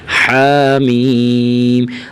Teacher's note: ہا کو ہلکا کھینچیں اور میم کو زیادہ